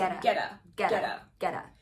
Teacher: I need to mention the infamous flap T here between get and a.